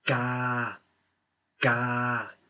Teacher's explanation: you would read it as Ga, ga, neutral tone. So just flat. Ga. Something to, as I told you, think about always and never forget is that the sound doesn't release any extra air.